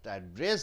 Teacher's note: Address means it is a noun. Address, you stress on dress.